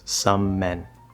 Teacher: Here we have sort of a longer version of the same consonant because we can just hold it. So you don't want to collapse it to one M sound and say summon, summon. That's not right.